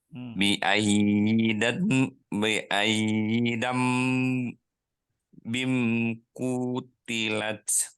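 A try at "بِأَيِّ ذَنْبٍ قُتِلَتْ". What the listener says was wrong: Ingat di sini zal besar ya. Cara pengucapannya ujung lidah kita keluarkan sedikit. Bi aizal zal.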